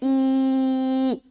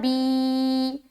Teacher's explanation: کھڑی زیر کو ایک الف کے برابر کھینچ کر پڑھیں گے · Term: کسرہ طویلہ